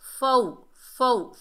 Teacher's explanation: واو لین، اسے نرمی اور جلدی سے ادا کریں گے۔ اور جیم کے اوپر دو پیش کی تنوین ہے، دو پیش کی تنوین کے بعد حروف اقفا کے 15 حروفوں میں سے سین آ رہا ہے، تو یہاں پر اقفا ہوگا، اقفا حقیقی، نون ساکن اور تنوین کے اقفا کو اقفا حقیقی کہتے ہیں۔